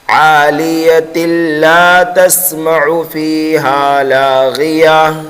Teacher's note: تو پھر اس تا کو ہم ڈائریکٹ لام مشدد میں ملا دیں گے، یہاں پر ادغام ہوگا بغیر گننے کے